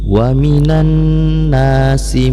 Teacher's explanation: alif lam syamsiyah bertemu dengan nun, maka dibaca idgham. Karena nun ini huruf yang bersifat gunnah, maka dibaca idgham beserta gunnah. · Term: idgham ma'a gunnah